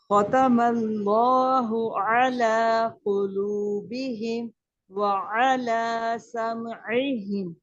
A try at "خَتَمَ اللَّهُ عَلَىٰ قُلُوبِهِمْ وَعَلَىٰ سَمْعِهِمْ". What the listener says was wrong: So when you say ala, your ayn here is good. Even here is good. But when you hear say sam'ihim, then it becomes heavy.